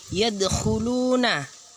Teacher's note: Kho itu ada di pangkal tenggorokan.